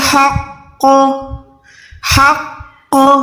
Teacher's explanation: یہاں پر کیا ہو گیا, قوف بھی یہاں پر دو ساکن میں ہو گیا, اور آپ کو یہ بھی پتا ہے کہ جب بھی قوف ساکن ہوتا ہے تو وہ قلقلہ میں آتا ہے, یعنی یہاں پر ہم نے آواز کو لوٹانا ہے